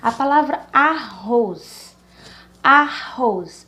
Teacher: a palavra arroz, a última sílaba, roz, ela é a mais forte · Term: oxítona